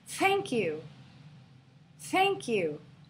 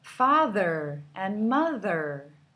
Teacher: the TH is voiceless and also can be voiced.